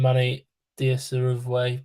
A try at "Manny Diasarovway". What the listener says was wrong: you're almost correct. You just pronounced the V when you shouldn't have.